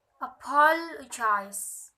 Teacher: Primary stress is on the second syllable and secondary stress is on the fourth syllables. All other syllables are unstressed. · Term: pattern 4